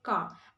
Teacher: the pronunciation of R is going to be non-rotic sound so it is actually not going to be pronounced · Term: non-rhotic sound